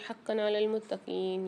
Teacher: یہاں پر دو زبر کی تنوین کے بعد عین آ رہا ہے، اظہار کر کے پڑھیں گے